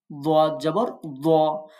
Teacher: আর দোয়াদ জবর দ, কোথায় জিহ্বার গোড়ার কিনারা তার বরাবর উপরের মাড়ি দাঁতের গোড়ার সাথে লাগায়